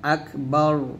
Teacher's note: আকবার, রু আছে, র পেশ থামলে আকবার, রটা আমরা মোটা করবো এক্ষেত্রে